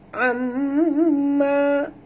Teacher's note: mim bertasydid, wajib dengung, ma dua harakat